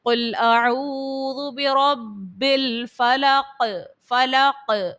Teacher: قلقلہ کو خوب ظاہر کرنا ہوتا ہے، تو قوف کو آپ ظاہر کر کے پڑھو گے۔ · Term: حرف قلقلہ